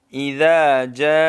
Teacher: جاء میں دیکھیں اکثر لوگوں کی غلطی کیا ہوتی ہے، یہاں یہ غلطی ہوتی ہے کہ یہ بڑی مد جو ہے یہ صحیح طریقے سے نہیں کھینچتے ہیں، تو اس کو 4 الف کی مقدار تک کھینچنا چاہیے